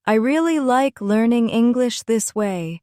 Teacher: In I really like learning English this way, the word really carries extra energy. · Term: emphasis